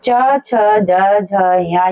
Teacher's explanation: च बोलने के लिए क जहां से हम बोल रहे थे मुंह के अंदर उससे थोड़ा सा आगे आ जाते हैं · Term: च वर्ग